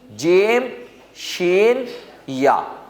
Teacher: حروف شجریہ کا مخرج یہ ہے زبان کی بیچ جب وسط اوپر تالو سے لگے، اس سے یہ 3 حروف ادا ہوں گے